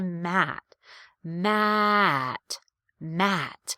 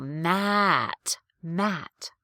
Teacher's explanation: i really feel that change in pitch that step down like you're stepping down a set of stairs within the vowel